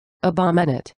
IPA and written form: ə'bɔmɪneɪt (abominate)